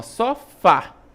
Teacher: a sílaba tônica é a última, ó, sofá. Logo, se a sílaba tônica é a última, eu tenho uma oxítona.